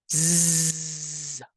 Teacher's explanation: exactly the same as the S, but now with vibration of your vocal folds? We say that S is a voiceless sound and Z is voiced.